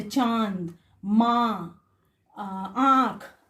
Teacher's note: अनुनासिक के उच्चारण में हवा नाक और मुंह दोनों से निकलते हैं, जैसे चांद, माँ, आंख आदि।